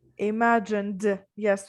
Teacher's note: again with d because it ends in a n sound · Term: d sound